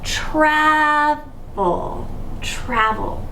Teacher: the reason that it's travel is because this first syllable is stressed, but the vowel is short